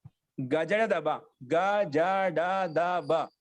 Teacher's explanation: ఇవి కూడా అల్ప ప్రాణాలు. ఇవి కూడా సింపుల్ గా పలుకుతున్నాం. దానికి ఎక్కువ ప్రాణశక్తి ఉచ్చరించడంలో కలగడం లేదన్నమాట.